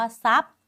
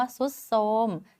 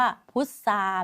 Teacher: ตัวที่เปลี่ยนเสียงเป็นซโซ่เท่านั้นที่เป็นควบไม่แท้